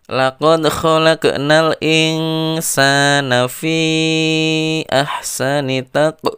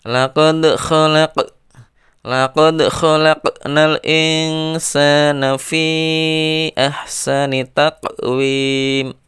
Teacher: Ada dua huruf qalqalah, dal dan qaf. Maka cara membacanya harus dipantulkan.